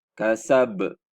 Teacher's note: Lantunkan bunyi ba yang sudah disukunkan itu. Tapi lantunannya dia sedikit keras daripada yang sughra tadi, yang di tengah-tengah. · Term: qalqalah kubra